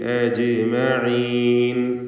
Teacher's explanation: ഷിദ്ദത്തിൻ്റെ ഹർഫാണ്. അജ്മഈൻ ജീമിന് സുക്കൂനുണ്ട്, ഖൽഖല സുഗ്റ നൽകി ജീമിൻ്റെ സുക്കൂനിനെ വ്യക്തമാക്കണം.